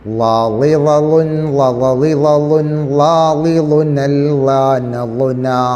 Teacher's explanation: നാവിൻ്റെ അരു, മേലെ മുൻപല്ലുകളും. നാവിൻ്റെ രണ്ടാലൊരു അരു തട്ടിയാൽ മതി. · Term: ലാദ്